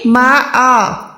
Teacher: ہم نے حمزہ کھڑی زبر آ کر کے ادا کرنا ہے، نہ کہ حمزہ ساکن